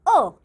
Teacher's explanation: जिन स्वरों के बोलने में जीभ का बीच वाला यानी मध्य भाग क्रियाशील होता है वह मध्य स्वर कहे जाते हैं